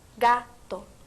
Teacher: así en la palabra gato el acento recae sobre la primera sílaba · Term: acento prosódico